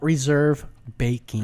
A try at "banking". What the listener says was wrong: Bank with an N.